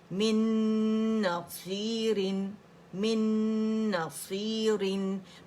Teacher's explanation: رن را کسرتین، رن باریکی سے پڑھا جائے گا